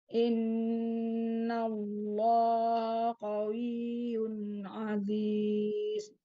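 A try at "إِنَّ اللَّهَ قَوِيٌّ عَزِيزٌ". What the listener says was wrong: Dibuka bukan he karena itu udah mau ketemu huruf isti'la. Innallaha qawiyyun aziz. Jadi kan huruf itu ada yang tebal, ada yang dibacanya tebal, ada yang baca tipis. Nah, jadi yang tipis ya dibaca tipis aja, yang tebal ya harus tebal gitu ya.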